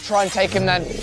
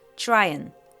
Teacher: the H in him is dropped. And instead of a full and, we just hear n. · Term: connected speech